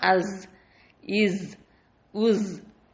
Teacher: நாவோட நுனி கீழ் வரிசையோட நடுப்பற்களோட ஈர தொடும் பொழுது உச்சரிக்கக்கூடிய எழுத்து தான்